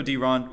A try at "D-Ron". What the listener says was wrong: Oh, I don't know if I ever told you, but it's actually pronounced D1. The R's pronounced like a W.